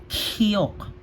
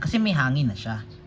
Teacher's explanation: Nilagayan lang po ng hangin kaya naging kok.